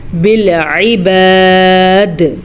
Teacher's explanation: ہم یہاں پہ وقف کریں تو دال ساکن ہو جائے گی. ساکن دال ہو گئی تو کلکلا کرنا ضروری ہے